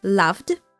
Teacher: you pronounce the word loved as in loved by many without the e sound